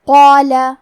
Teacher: کلمت قال میں حرف القاف ہے اور اس کے بعد مد الف ہے. مد الف اپنے پیچھے والے حرف کا حکم لیتا ہے تفخیم میں اور ترقیق میں، لہذا ہمیں مد الف کو بھی بھاری آواز میں پڑھنا ہے